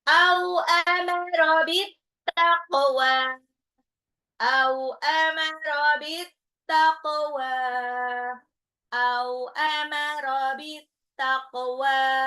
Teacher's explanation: Qafnya di qalqalah pantul.